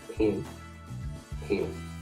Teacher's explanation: The reason why I put the word pen in there is because the southern US accent is famous for a merger. The words pen and pin sound exactly the same in the southern US accent.